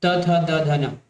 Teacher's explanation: द से मैंने दांत बनाया है कोड, तो द से दांत, त थ द ध न। देखिए जब भी आप त थ द ध न बोलेंगे आपका जीभ कहीं कहीं ना कहीं जाके आपके दांत से टकराने वाला है